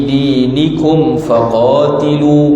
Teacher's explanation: mim mati bertemu dengan fa, izhar syafawi, tidak ada dengung